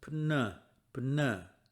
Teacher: It's not P, but B. And the P and the Ni, the PN, are both pronounced.